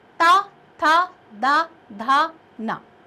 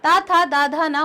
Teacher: आप देखिए टा, ठा, डा, ढा, अणा, सिर्फ जो आगे का जो पॉइंट होता है ना वहां पर, तो मूर्धा इसका उच्चारण स्थल है। त वर्ग का उच्चारण स्थल दांत है, यानी दोनों दांत आपस में टकराएंगे।